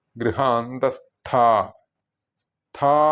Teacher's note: ഗൃഹാന്തസ്ഥ സ്ഥാ എന്ന് നീട്ടേണ്ടതാണ് കാരണം ഇതെല്ലാം സ്ത്രീ ദേവത മന്ത്രങ്ങൾ ആയതിനാൽ നീട്ടിയിട്ടാണ് ഉച്ചരിക്കേണ്ടത്